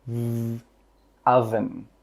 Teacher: With that V sound, your throat should vibrate.